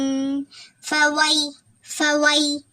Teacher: யா சுக்கன் பெற்று அதுக்கு முந்தின இடத்துல ஜபர் இருக்குதா, அதனால இது வாவ் லீன் விரைந்து ஓதணும்